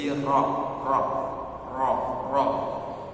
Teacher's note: Ro sendiri sifatnya takrir artinya ada getaran di ujung lidah, ujung lisan tapi sifat tidak berulang-ulang